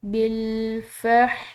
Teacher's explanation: شین کے بعد الف کے اوپر بڑی مد ہے تو بڑی مد کو کھنچاؤ دیا جاتا ہے، 3 الف کے برابر کم از کم اس کا کھنچاؤ ہو، یعنی کہ 3 الف سے زیادہ ہو سکتا ہے لیکن 3 الف سے کم نہیں۔